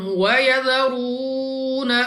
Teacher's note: रा के ऊपर है पेश, तो रा को पुर यानी मोटा पढ़ना है। वाव साकिन से पहले पेश वाव मद्दा 2 सेकंड तक खींचा जाएगा।